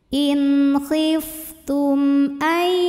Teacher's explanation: Ini alif kalau ada harokatnya, pada hakikatnya adalah hamzah. Maka mim sukun ini kita bunyikan dengan jelas, m jelas. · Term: izhar syafawi